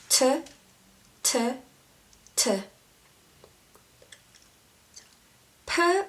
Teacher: ㅍ is another labial sound Same as ㅁ or ㅂ But you use air and blow it out a bit